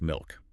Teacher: In Australian English, that L is very dark. It's made way back in the throat. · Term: dark L